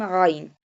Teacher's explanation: Ain pronounced from the middle part of throat